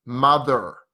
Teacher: American would usually be much stronger mother er they really pronounced the ER